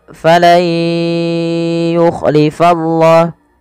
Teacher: nunnya kita masukkan kepada huruf ya teman-teman